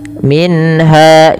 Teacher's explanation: jelaskan suara nunnya ketika bertemu dengan ha karena ia izhar halki